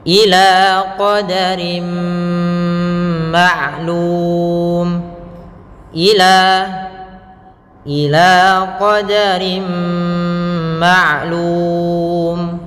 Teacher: qadarin ketemu dengan mim, maka suara nunnya diganti dengan huruf mim, dimasukkan langsung ke huruf mim, maka dinamakan dengan idgham.